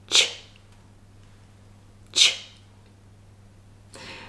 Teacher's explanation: Ch is unvoiced and the tongue is on the Palato Alveolar. · This is called the Palato Alveolar. And the middle of the tongue is raised towards the hard palate